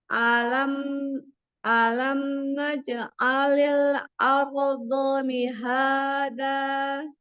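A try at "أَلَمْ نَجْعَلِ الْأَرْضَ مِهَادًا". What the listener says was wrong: Dotnya tebalkan lagi.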